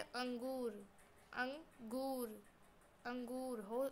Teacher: होठ आपके गोल से हो जाते हैं और इसमें नाक से आवाज आती है।